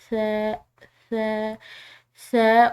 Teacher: ث اور ذال ان دونوں کا مخرج ایک ہے، یعنی کہ ان کے ادا کرنے میں سیٹی کی آواز نہیں ہوتی